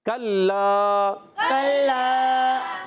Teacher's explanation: لام الف زبر لا، علی مدہ ایک الف کھینچیں گے بھی، کاف کو لام سے ملانا ہے، اور لام مشدد ہونے کی وجہ ذرا رک کر ادا ہوگا، اور ایک الف کھینچنا بھی ہے